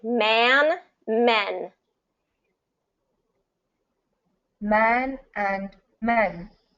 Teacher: So you're getting that ah for the first one and eh for the second one.